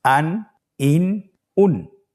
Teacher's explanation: প্রত্যেকটি উচ্চারণের শেষে দন্ত ন উচ্চারিত হচ্ছে